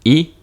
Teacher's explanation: tongue is up and forward. So this is a palatal vowel.